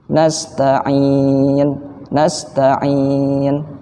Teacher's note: ada dengungnya jika pada Mad Arid sukun misal contohnya nastain'in nastain'in ada juga dengungnya tapi tidak sesempurna ketika tasydid